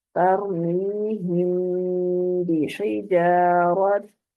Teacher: तरमीहिम बिहिजारत, ठीक है, इसको नाक में आवाज को हमने छुपा के फिर अदायगी करनी है